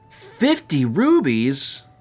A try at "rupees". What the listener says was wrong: Rupees? You said rubies. Rupee? You're putting a B in it.